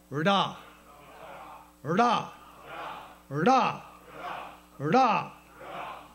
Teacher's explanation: You have to hit the upper, you got to strike the upper palate with the tongue.